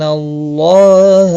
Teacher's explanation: اللہ کا لام زبر کی وجہ سے پر پڑا جائے گا